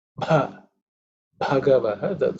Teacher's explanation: So the Bha is aspirated. It's the fourth letter in the Pa Varga.